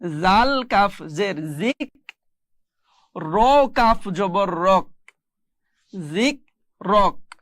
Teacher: শেষের হরফটিতে জবর দেওয়া আছে এই জবরটি পড়া যাবে না, কাফ জবর কা পড়া যাবে না। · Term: যোজম